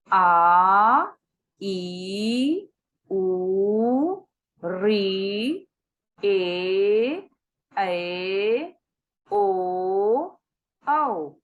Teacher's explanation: इनको बोलने में हमें दुगना समय लग रहा है ह्रस्व स्वर की अपेक्षा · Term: दीर्घ स्वर